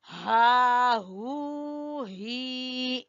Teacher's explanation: गले के आखिरी हिस्से से हा हू ही